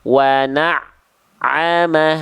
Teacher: itu bunyi ainnya tekan tapi jangan membuat ainnya putus bunyinya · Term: ain tasdid